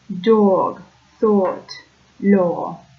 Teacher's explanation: the O sound in words like thought, law, dog become a diphthong